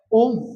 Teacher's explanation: जहां पे हमको लंबा खींचना है किसी चीज को वही क्या है त्रिमात्रिक स्वर है